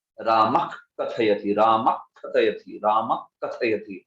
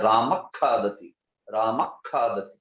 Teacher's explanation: जिह्वा मूल्य में वो जो विशिष्ट उच्चारण होता है उसको करना चाहिए, जोर देके विसर्ग और क दोनों मिला के होना चाहिए वो।